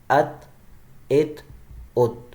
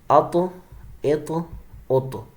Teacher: ان حروف کے ادا کرتے وقت مخرج میں جنبش سی ہوتی ہے، جس کی وجہ سے آواز لوٹتی ہوئی نکلتی ہے. یعنی ان شارٹ قلقلہ ایکولز ٹو آواز کا ریپیٹ ہونا، بس اس سے زیادہ کچھ بھی نہیں ہے.